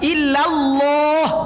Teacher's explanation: La-nya tipis. Lallah. Di lohnya baru ditebalkan. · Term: Tafkhim fi lafzil jalalah